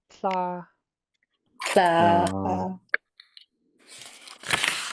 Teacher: It's a voiceless L.